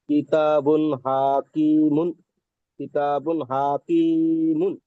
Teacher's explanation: মিমের উপরে দোপেশ এসেছে, দোপেশটি তানবিন, তানবিনের আওয়াজ আর নুনের আওয়াজ একই মতন।